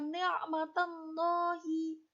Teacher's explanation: Bacaan selanjutnya kata ni'matallahi, bacaan tafhim atau tebal, karena didahului oleh fathah